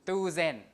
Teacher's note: So it would be tu, and then long u, and then s. S is a z, right? In here because it's between 2 voice sounds